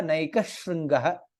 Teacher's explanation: There is no Sakara. Sha becomes double there.